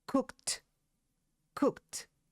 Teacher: And what you are going to do is you're going to pronounce the verb, and then you're going to immediately add the sound of a T, like t. So you're going to say cooked, cooked.